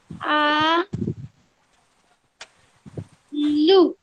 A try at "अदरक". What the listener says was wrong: आ नहीं है वो, ओ। यस अ द र क अदरक।